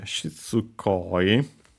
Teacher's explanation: we would have two sequences of unvoiced vowels barely heard, if at all. So we actually should keep only one.